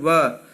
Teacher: वकार से दंतोष्ठम, वह का उच्चारण स्थान दंतोष्ठ, दंत और ओष्ठ है,